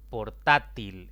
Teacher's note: portátil es otra palabra de tres sílabas la mayor intensidad cae en la penúltima sílaba y como termina en otra consonante que no es ni en